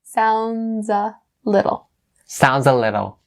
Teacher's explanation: so we bring that z sound over from sounds to a.